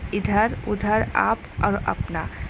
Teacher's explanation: केवल मुख से बोले जाने वाले स्वर वर्ण को हम निरानुनासिक कहते हैं